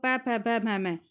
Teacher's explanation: पै वर्ग देखो ओष्ठ, तो पै को बोल के देखो पै फै भै भै मैं, जो हमारे ओठ है वो आपस में, ठीक है, मिल रहे हैं